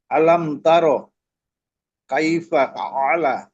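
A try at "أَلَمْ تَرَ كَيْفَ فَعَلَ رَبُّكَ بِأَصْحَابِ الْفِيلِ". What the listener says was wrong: জি ঠিক আছে, এরকম শব্দ ভেঙ্গে ভেঙ্গে পড়েন।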